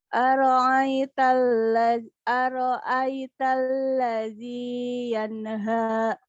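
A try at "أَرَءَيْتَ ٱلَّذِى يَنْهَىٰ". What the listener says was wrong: Oke, yan jangan mantul, jangan yan deh. Yanha.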